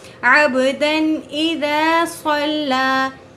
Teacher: جب بھی نون ساکن یا تنوین نون ساکن، یہاں پر یہ نون ساکن یا تنوین، دو زبر دو زیر دو پیش کے بعد حروف حلقی حمزہ ہا عین ہا غین خا میں سے کوئی حروف آ جائیں تو وہاں پر کوئی غنہ کوئی اخفا نہیں ہوگا، ڈائریکٹ پڑھیں گے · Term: اظہار حلقی